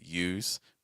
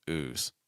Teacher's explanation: Yes, use will have that, again, that U sound. Ooze will not have that Y sound before it. So again, use versus ooze.